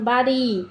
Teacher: তারিত ব্যঞ্জন যে ধ্বনি উচ্চারণের সময়ে জীভের সামনের অংশ দন্তমূলের একটু উপরে অর্থাৎ মুধায় টোকা দেওয়ার মত করে একবার ছুয়ে যায় তাকে তারিত ব্যঞ্জন বলে।